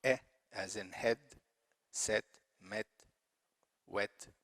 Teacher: Mid vowel, front, E, as in head, set, met, wet.